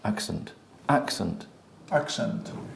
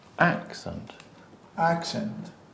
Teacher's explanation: And also, you have the schwa. And the schwa is less than a normal syllable.